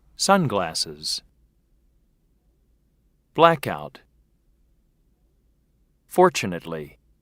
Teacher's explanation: note the word stress first syllable